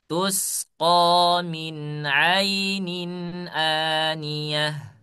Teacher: min ini harus jelas, izhar ya, jangan disamarkan